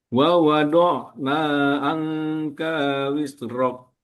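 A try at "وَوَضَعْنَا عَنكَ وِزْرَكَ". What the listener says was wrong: Pendek saja. Wiz tidak perlu dipantulkan, dia harus jelas seperti kita bilang huruf Z. Nah, bukan kof tapi K di tipis saja.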